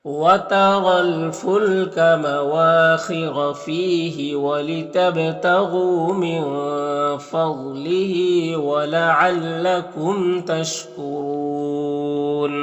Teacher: نون میں اخفا ہوگا، ضاد کو پر پڑھیں گے